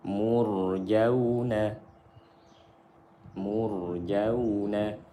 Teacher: Mur, mur, karena sukun setelah dhammah. Jauh, waw sukun setelah fathah, waw lin dibaca lembut